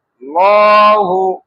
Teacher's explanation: একটু টান দিয়ে ল মোটা করে উচ্চারণ করব।